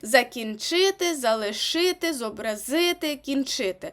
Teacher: у дієсловах які у нас закінчується на ити так і матимуть наголос на и перше